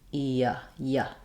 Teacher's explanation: my tongue moves from the position it's in when I say the vowel e to the position it's in when I say the vowel uh yeah um so it's not saying an e or an uh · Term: Glide